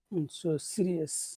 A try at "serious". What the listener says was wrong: Number one, that that happens in your throat. So should be longer. But also it's the accented syllable. So that's two reasons why it should be pretty long. Serious. If you say Sidious, maybe people will understand it, maybe not.